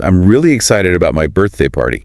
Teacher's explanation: emphasizing really to make excited stronger. Yeah, really adds that extra oomph.